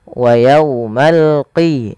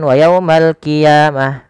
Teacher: Dia adalah huruf qaf ya, lebih tebal hurufnya dan dia sifatnya sifat isti'la, pangkal lidahnya terangkat